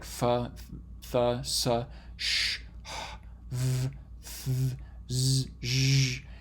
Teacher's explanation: you can kind of continue their production as long as you want, as long as you have enough air coming out of your lungs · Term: fricative sounds